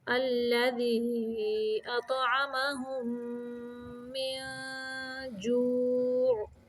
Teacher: اخفاء حقیقی کا قاعدہ ہے، یعنی ہم نے نون کو چھپا کے ناک سے نکالنا ہے